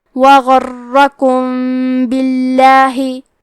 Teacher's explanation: با حروف الاخفاء الشفوی میں سے ہے تو ہم میم ساکن کو چھپاتے ہوئے اور غنہ کے ساتھ یہ حکم کو ادا کریں گے